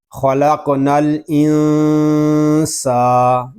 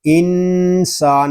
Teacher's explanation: یہاں چھپا ہوا غنہ کریں گے، یعنی اخفا والا غنہ. خلقنا الانسان، سین حروف صفیریہ میں سے ہے، اس میں سیٹی کی آواز بھی آئے گی.